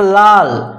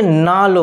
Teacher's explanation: দুটো ল ছিল, একই ব্যঞ্জন আলাদা ব্যঞ্জনেতে পরিণত হয়ে গেল, একটা দন্তন্য একটা ল। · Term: বিষমীভবন